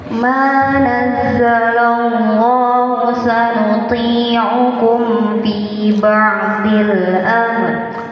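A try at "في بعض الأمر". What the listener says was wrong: Boknya tebalkan. Ba'dhi. Memang sulit pada dot yang kasroh nih, kadang agak sulit menebalkan fi ba'dhi. Jadi bujur-bujur letakkan makhrajnya. Jangan fi ba'dil amr. Tebalkan. Rohnya amr, tebal ya. Amr.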